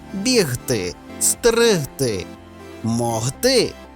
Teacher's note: оглушення не відбувається і г вимовляється дзвінко